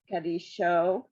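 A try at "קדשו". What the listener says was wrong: So there's no, under the Daled, there's really no sound. It's just kad show. It's two dots for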